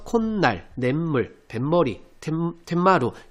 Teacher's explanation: 뒷말 니은 미음 앞에서 니은 소리가 덧나는 경우예요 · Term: 비음화